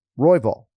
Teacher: you got to emphasize the first syllable here, Royval. Not Royval.